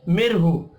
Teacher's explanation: रा साकिन से पिछले हर्फ के नीचे ज़ेर है, रा को बारीक पढ़ेंगे